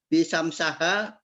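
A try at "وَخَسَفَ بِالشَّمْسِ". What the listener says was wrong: Enggak ada bi ini, syamsuha wa qamaruha. atop ke syamsu.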